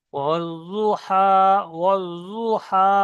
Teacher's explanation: দাল হবে না, আর জ হবে না, ওর মাঝখানে হবে জ। জিভের কিনারা এবং উপরে মাড়ির দাঁতের গোড়ার সঙ্গে লেগে উচ্চারণ হবে জদের মাখরাজ